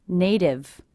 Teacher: I hear this t as a d because again it's a t coming between two vowel sounds · it's a T coming between 2 vowel sounds, will be a flap T, sounds like a D.